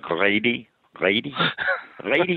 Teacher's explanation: he has what's called, I think it's called a glottal L, where he can't say words like lady